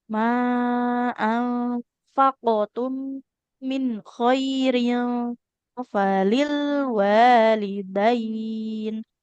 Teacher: qalqalah qafnya qul ma anfaqtum karena qafnya tebal. Nah, qalqalahnya ikut tebal.